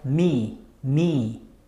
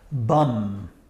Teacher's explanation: an example me me and you have this one bum [Music] clearly there's a vibration happening in your nasal tunnel